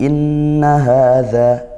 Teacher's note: Berikutnya di ayat yang ke-18 inna hadza, inna nun bertasydid dibaca dengung gunnah